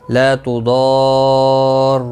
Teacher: یہاں پر بڑی مد ہے، مد لازم 5 الف کے برابر کھینچ کر پڑھیں گے